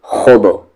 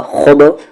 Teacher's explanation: خا heavy letter ہے با پہ قلقلہ ہوگا